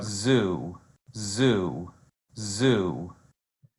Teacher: to just that fricatives you can hear that buzzing sound and I'm doing this not to clear my throat but to indicate my vibrating vocal folds